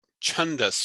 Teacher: that is the CH sound with ha with breath after it